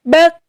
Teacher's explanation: Contohnya kaki kubak. Kalau disukun sifatnya yaitu hamas, harus ada nafas yang keluar.